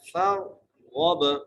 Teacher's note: फा को रा से मिलाना है, रा को मोटा करके पढ़ना है